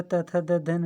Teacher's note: त वर्ग में जो है त थ द ध न ये दांतों का स्पर्श करते हैं